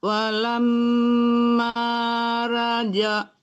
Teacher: Walamma ra ditebalkan juga ro-nya. walamma raja'a Ro, jangan ra tapi ro.